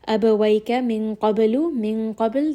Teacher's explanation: Ba is going to have qalqala, a little bit of a bouncing sound.